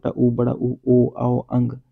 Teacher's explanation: वृत्तमुखी वो हो गए जिन स्वरों के उच्चारण में ओंठ गोलाकार हो जाता है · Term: वृत्तमुखी स्वर